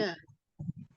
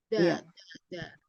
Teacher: Punggung ujung lidah menempel pada ujung gigi seri atas.